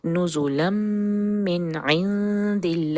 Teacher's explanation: اس کا نون کمپلیٹلی مرج ہو چکا ہے میم میں، اس لیے ہم صرف میم کے اوپر شدہ پڑھیں گے